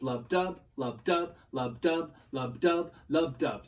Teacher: A lub and a dub, a stressed and an unstressed syllable. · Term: iambic pentameter